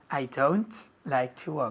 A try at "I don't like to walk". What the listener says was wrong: I don't like to walk. No es don't. Don't. Muy fuerte con la T.